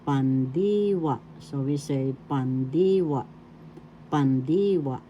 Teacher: The accent is in the second syllable.